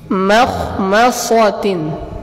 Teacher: Setelah itu kata beliau diperhatikan juga pada huruf mim. Pada huruf mim jangan dibaca tebal. Huruf mim ini di keadaan apapun dia dibaca tipis selalu.